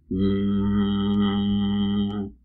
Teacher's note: you can even pronounce the nasal consonant ma without any vowel. You can continuously say mmm.